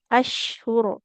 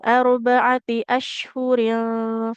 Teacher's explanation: Ro ini kalau kita wakaf jadi tebal tapi kalau wasal atau dilanjut jadi tipis. Nah, kan kalau dilanjut eh kalau kita berhenti ashur dia jadi sukun.